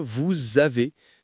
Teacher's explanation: Normalement, le S de « vous » est muet, mais comme le mot suivant commence par une voyelle, on doit le prononcer et ça devient « vous avez ». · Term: liaison